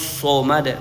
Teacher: Sebelah dalam itu hampir menyentuh langit-langit so ya. Naik pangkal lidahnya naik ya. Itulah yang membuat vokalnya agak ke O. Bukan ee bibir kita yang membentuk harakat O. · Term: shad